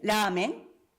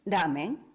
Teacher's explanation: ramen o lamen suena exactamente igual en el sentido de que no lo diferenciamos, no hay distinción, no es un rasgo distintivo, y esto es muy importante.